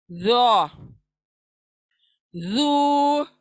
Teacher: जबान बाहर को आएंगी, दांतों के सामने के सिरे से लगेंगी, लेकिन गोल होगी जबान